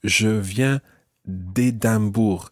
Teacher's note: you drop the E of de and you run it into the next word with an apostrophe.